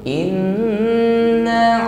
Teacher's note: Di nun dengan tashdid, nah, sempurnakan suara senandungnya, ghunnah mushaddadah.